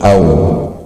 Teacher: Au ya, au bukan gairu maddiyah. Au menyongkan dua bibir sehingga terbunyilah suara waw yang sukun, au.